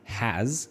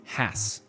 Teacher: the strong form is has, like a Z sound, and the weak form is has with an S sound